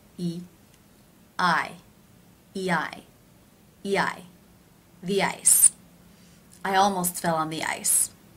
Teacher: The E as in she vowel linking to the I as in by diphthong. E, I, E-I, E-I, the ice.